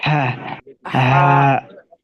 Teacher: আর এইটা বড় হা আছে, এটা গলার ভিতর থেকে হবে